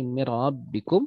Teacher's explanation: Yang terjadi adalah bagaimana menyebutkan ra itu dengan lebih tersembunyi takrirnya atau getarannya tidak terlalu kentara. Dalam pengucapan huruf ra, jadi sifat takrirnya jangan terlalu kentara.